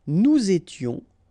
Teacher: final S not pronounced, and then you make the liaison